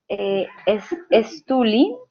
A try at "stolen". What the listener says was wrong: stolen, stolen, se le agrega la N a la participio.